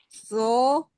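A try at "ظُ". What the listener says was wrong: ini masih terdengar huruf sin, tapi lo. Coba saya perlihatkan pengucapannya, Bu. Ujung lidahnya tempelkan dulu, Bu. Nah, ke atas, ke gigi seri atas ya. Baru ucapkan lo, di-o-kan coba.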